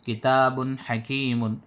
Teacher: ہو رہا ہے، تنوین کے بعد حروف حلقی میں سے حا، تو نون کی آواز جو اس میں ہے اس کو ظاہر کر کے بلا غننے کے جلد پڑھ رہے ہیں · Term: اظہار